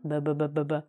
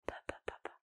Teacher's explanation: the B sound, ba ba ba ba ba, will always vibrate, and the P sound, ba ba ba ba, will not vibrate